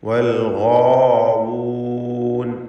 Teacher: ഗൈനിനും അതിൻ്റെ ദീർഘാക്ഷരമായ അലിഫിനും തഫ്ഖീം കൊടുക്കണം, പൂർണ്ണമായ തഫ്ഖീം.